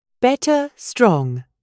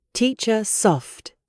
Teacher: British English is non-rhotic. We replace the R with a soft sound, known as the schwa.